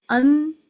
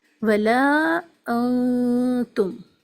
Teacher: اگر یوں کہا جائے آسان زبان میں، ایک ہی وقت میں آپ کو 2 چیزیں یاد رکھنی ہیں، زبان کی نوک کو اوپر نہیں لگانا، آواز کو ناک میں روک کر پڑھنا ہے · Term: اخفا